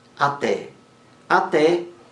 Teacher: até é uma palavra oxítona a sílaba mais forte a última